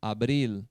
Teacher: O L no final, a língua vai lá no céu da boca, no palato.